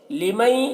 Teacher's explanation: لمئی، یہاں پر نون ساکن کے بعد حروف یومن سے یا ہے تو نون کو یا سے ملا کر غنہ کے ساتھ پڑھیں گے، اس کو ادغام ناقص کہتے ہیں۔